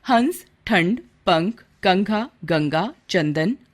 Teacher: अनुस्वार का उच्चारण वर्णों के पहले 5 वर्गों क वर्ग, च वर्ग, ट वर्ग, त वर्ग तथा प वर्ग के अंतिम वर्णों के अर्धांश के समान नासिका से होता है।